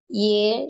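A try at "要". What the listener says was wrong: ইয়ে না, ইয়াও, এটাকে বলে ইয়াও।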